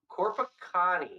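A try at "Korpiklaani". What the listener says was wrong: Corpaclani. There is an L.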